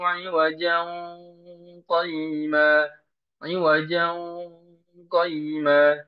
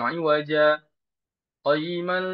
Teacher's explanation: Diikhfakan ketika dia wasal, bukan di sakta.